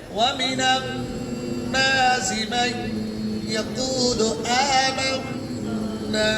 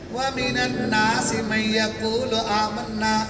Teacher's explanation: नून के ऊपर तशदीद हो तो हमेशा गुन्ना होगा, इदगाम होगा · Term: नून गुन्ना